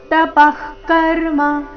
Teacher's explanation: विसर्गದ ಉಚ್ಚಾರಣೆ ಖ ರೀತಿ ತಪಃ ಕರ್ಮ ನ ತ್ಯಾಜ್ಯಮಿತಿ ಚಾಪರೆ ನ ತ್ಯಾಜ್ಯ ಇಲ್ಲಿ ನ ಮೇಲೆ ಆಘಾತ